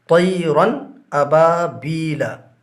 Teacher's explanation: لہٰذا تنوین کو ظاہر کر کے بلا غنہ کے پڑھیں گے۔ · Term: اظہار